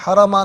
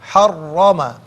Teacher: را مشدد ہے ناظرین تو اس کو جماؤ کے ساتھ ادا کریں گے